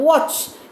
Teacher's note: V is a bilabial sound because രണ്ട് ലിപ്പാണ്. വാച്ച് എന്ന് പറയുമ്പോൾ ലിപ്പ് റൗണ്ട് ചെയ്യുന്നുണ്ട്. It is not similar as this v.